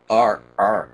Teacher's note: for a lot of people the r tends to go back in the throat